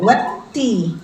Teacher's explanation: ta itu sifatnya syidah tapi dia Hames jadi ada percikan udara